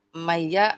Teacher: nun sukun bertemu dengan huruf ya. Idgam bigunah ditasdjidkan dilebur ke huruf ya. Disertai dengung.